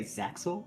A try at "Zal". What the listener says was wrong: No, cuz the X is not pronounced in Japanese.